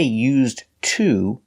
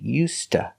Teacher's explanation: the D is pronounced like a t us and to is pronounced T So together you hear USTA